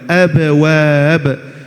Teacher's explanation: Kalau pengen terdengar seperti huruf ba, kita harus baca dengan abwab, ada qalqalahnya.